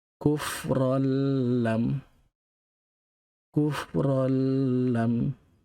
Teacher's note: Tanwin bertemu dengan huruf lam, yang mana lam merupakan huruf idgham juga, tapi dia bukan mak gunnah, dia adalah bila gunnah, tanpa dengung. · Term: idgham bila gunnah